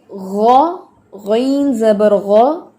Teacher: زبر اور پیش کی صورت میں اچھا خاصا موٹا ہوتا ہے